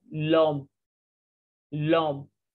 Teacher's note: L and O will link together and it will be pronounced as l'homme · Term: liaison